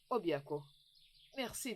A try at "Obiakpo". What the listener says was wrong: Au fait, ta façon de dire Obiakpo, tu sais, j'aimerais que tu utilises une voix un peu plus romantique pour prononcer ce Obiakpo. Pas Obiakpo comme si on allait à la guerre. Obiakpo.